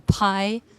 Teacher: Então, em palavras como pie, que a gente solta esse arzinho assim com a boca, pie, é muito importante para os nativos de língua inglesa entenderem que a gente está fazendo um som de P e não um som de B. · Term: aspiração